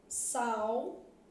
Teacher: o A é vogal e o U é semivogal. Logo, eu tenho um ditongo decrescente.